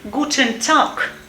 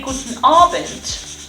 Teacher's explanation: Also, when I say Guten Tag, even though it's a G at the end, or when I say Guten Abend, you don't hear D, right? You hear T. You don't hear G, you hear K, right?